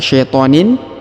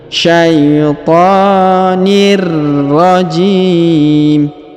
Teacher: Kemudian huruf tanwin in bertemu dengan ro bertasdid, maka kita tekan ya pada huruf ro. Kita tahan dan kita tekan pada huruf ro.